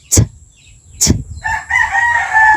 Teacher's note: To create the T, air is briefly prevented from leaving the vocal tract when the tip of the tongue presses against the tooth ridge, while the side of the tongue presses against the upper side teeth. The sound is aspirated when the air is released.